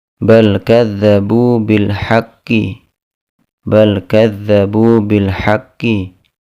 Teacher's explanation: Lam sukun pada kata bal bertemu dengan huruf kaf, maka dibaca dengan idhar, dengan jelas.